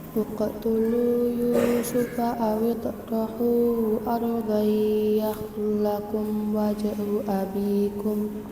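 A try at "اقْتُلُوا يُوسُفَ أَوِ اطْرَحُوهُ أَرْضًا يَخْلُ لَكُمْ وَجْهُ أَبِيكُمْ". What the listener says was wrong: Belum. Uqtulu awalannya. Uqtulu Yusufa. Turunkan.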